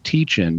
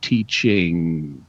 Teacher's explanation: you're pushing some of the air through your nose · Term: nasalization of the N sound